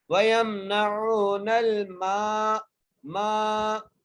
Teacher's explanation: مدہ آ گئی ہے، اور نون کو لام سے ملانا ہے، اور میم کو ایک الف کی مقدار کھینچ کے پڑھنا ہے